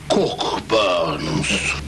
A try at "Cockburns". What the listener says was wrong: No, we don't pronounce the CK.